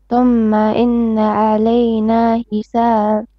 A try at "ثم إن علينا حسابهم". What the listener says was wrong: Don't pause. And so thumma inna. Ha, middle throat. علينا حسابهم.